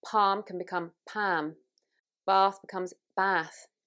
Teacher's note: So you can hear it's moving to an ah.